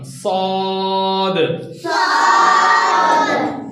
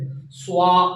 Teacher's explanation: इसके अंदर एस को जरा मोटा पढ़ना